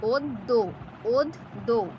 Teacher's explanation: এখানে এই যে দ, এই ব্যঞ্জন বর্ণটির সাথে যুক্ত হয়েছে জফলা, এই দকেই দুবার এখানে উচ্চারণ করাবে এই শব্দটিতে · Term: দুবার উচ্চারণ